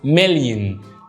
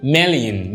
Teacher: اخر صوت متحرك ده عندنا هيبقى صوت ضعيف جدا، بقول بص million. فكلمة million فيها صوت متحرك في الاخر ضعيف جدا، فبقول million.